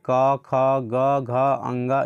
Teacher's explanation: इस सभी में क्या है डायरेक्ट कंठ से आवाज़ आता है